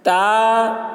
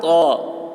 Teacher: تا کی آواز پتلی ہوتی ہے اور طا کی آواز موٹی ہوتی ہے